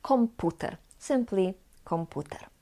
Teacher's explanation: the voiceless p is still pronounced as P not like B